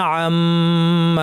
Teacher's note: মিমের উপর তাসদিদ আছে লম্বা গুণা, এবং পরে আলিফ আছে, দুইটাকেই টানতে হবে